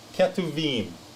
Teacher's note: Your Sheva, that's your brief E. This is your Bet without the Dagesh, so it's a V sound. Then you got your Hirek Yod, that's your long I. · Bet does not have the dot in the middle, the Tagesh Lene. So it is a V sounding B. Hirek Yod is your historically long I, and your Mem Sofit. · So this is your K, your Sheva, your Tav is your T. You got your Shurek, which is a long U. Then you got your Bet again.